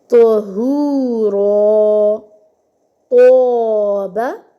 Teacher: تو کے لیے ہماری آواز بھاری ہو جائے، پر ہو جائے. طہورا، توبہ.